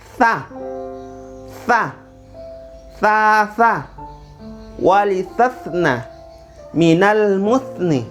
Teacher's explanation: Ini tha, ujung lidah gigit sedikit.